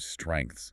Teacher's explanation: those harsh, dense clusters of consonants that English has, like the STR and NGTHS and the word strengths